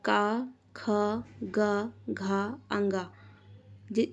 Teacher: इसमें हम देख रहे हैं कि हमारा कंठ व्यंजन है, हमारे कंठ में हमारी जीभ लग रही है।